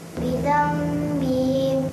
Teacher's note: dengung ni Biasa dua harakat